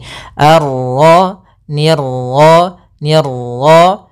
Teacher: pantulan dalam huruf ro itu cukup sekali saja karena sifat ro ada sifat takrir yaitu pengulangan tapi hanya sekali · Untuk pantulan dalam huruf ra itu cukup sekali saja